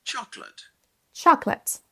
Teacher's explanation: Et le deuxième son, la deuxième syllabe, qui est un son schwa, on l'entend à peine et c'est un son E.